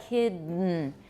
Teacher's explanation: so that is called a nasal release of a consonant